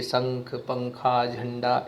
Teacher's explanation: इसका उच्चारण नाक से होता है, जिसका चिन्ह एक बिंदी होती है। यह व्यंजन के ऊपर बिंदु के रूप में लगता है, जैसे शंख, पंखा, झंडा ऐसे। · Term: अनुस्वार